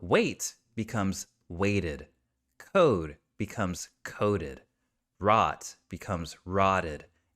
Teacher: have that or D sound at the end of a word we are going to add an ID sound to it really short quiet sound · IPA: /ɪd/